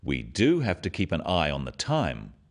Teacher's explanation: Notice the emphasis on the word do and practice after me.